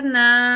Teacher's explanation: الف خالی، پچھلے الفاظ میں زبر ہے، 1 کاؤنٹ کھینچیں گے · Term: الف مد